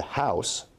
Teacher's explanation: starts at [a] and ends at [ʊ] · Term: diphthong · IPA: [haʊs]